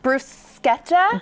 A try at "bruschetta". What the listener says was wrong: It's not bruschetta. In Italian, when you have CH, it's K, which is like counterintuitive to us Americans, but it is bruschetta.